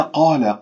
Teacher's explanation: قاف مفتوحة بعدها ألف، مفخمة مرتبة أولى